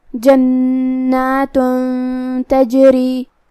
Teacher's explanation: کلمت جنات میں یہاں نون پہ تشدید ہے، دو حرف کے برابر ہمیں نون کو پڑھنا ہے. جو کہ یہاں مد الف ہے تو دو حرف کے برابر ہم اپنی آواز لمبی کریں گے. · ہم یہ تنوین کو چھپاتے ہوئے بغیر ظاہر کیے ہوئے لیکن غنہ کے ساتھ یہ حکم کو ادا کریں گے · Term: اخفاء